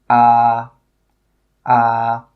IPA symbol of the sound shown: ɑ: